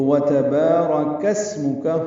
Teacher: سین ساکن ہے، اس پہ ہمس ہوگا. میم اور کاف کو جلدی پڑھیں گے · کاف کو اسم کا کے سین سے ملانا ہے کیونکہ اسم کا حمزہ عارضی ہوتا ہے، تو وَتَبَارَكَ اسْمُكَ ہو جائے گا.